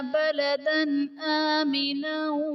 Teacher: بلدن آمنن میں دال پر دو زبر کی تنوین، تنوین کے بعد حروف حلقی میں سے حمزہ آ رہا ہے، تو یہاں پر اظہار کا قاعدہ ہوگا، یعنی تنوین میں ہم غنہ نہیں کریں گے